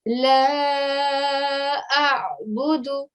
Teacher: try not to elongate the sound of the dal as it's only got a dhamma on top